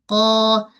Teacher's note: Bila sebut qaf mesti kena baca dengan keadaan tebal. Pangkal lidah terangkat sebab dia huruf yang istial.